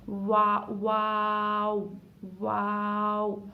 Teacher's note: वाव पढ़ते वक्त होठ गोल से शुरू होते हैं और होठ गोल पर ख़त्म भी होते हैं